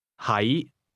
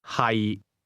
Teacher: 係 The difference is that to be is pronounced with a low, level tone, and to be located is pronounced with a mid-rising tone.